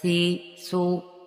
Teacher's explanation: سا سیٹی کے بغیر پڑھا جائے گا، سی، سو بغیر سیٹی کے پڑھیں گے